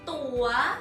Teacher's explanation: vowel long sound ตออัวตัว and rising tone ตั๋ว